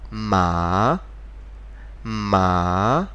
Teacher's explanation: So what we do, we lower our voice first and then we go up again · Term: the third tone, second tone